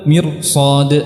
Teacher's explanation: Ketika kasrahnya 'aridah maka ra-nya menjadi tebal, irji'i. Ketika depannya ada huruf isti'la maka ra-nya juga menjadi tebal